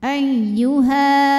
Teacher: ayyuha Kalau berhenti di ha hukumnya adalah Mad Thobi'i ziri sebab ada Alif didahului baris fathah maka panjangkan dua harakat Kalau berhenti ayyuha namun jika wasal atau kita meneruskan bacaan madnya